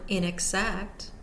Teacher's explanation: the first syllable a secondary stress, the middle syllable unstressed, and the last syllable or third syllable primary stressed. Act, inexact.